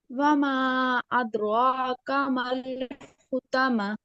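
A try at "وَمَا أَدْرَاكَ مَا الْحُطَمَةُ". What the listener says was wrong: अद, दाल पे कलकला होगा।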